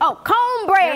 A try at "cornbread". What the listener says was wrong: There's no R in corn.